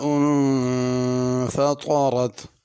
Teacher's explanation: فطرت طا بھی پر پڑھنی ہے اور را کو بھی موٹا کر کے پڑھنا ہے، باریک نہیں پڑھنا